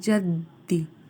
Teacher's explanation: ذل جدی میں دیکھیے ذال کو زا نہیں پڑھا جائے گا، نرمی سے ادا کیا جائے گا، اور دال مشدد ہے اس لیے اس کو دو بار ادا کیا جائے گا